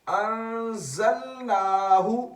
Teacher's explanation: نون کو ہم نے لمبا کیا یہاں پر کیونکہ کھڑا زبر ہے